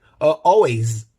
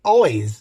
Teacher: We write it with S, but it's Z. Like always. It has to vibrate. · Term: Z sound